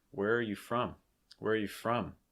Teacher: you're actually going to kind of link those R's together a bit. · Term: linking